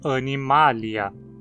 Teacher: Então não tem nenhum requisito para receber o acento. Assim, o acento cai na antepenúltima sílaba e a gente precisa dizer animalia. Praticamente sempre que você encontrar um nome terminado em ia, você vai pronunciar como uma proparoxítona, porque esse ia é sempre curto e vai estar na penúltima sílaba.